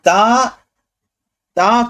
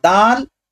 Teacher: اور تا کی صفت ہمس ہے، اور دال یہ جہر ہے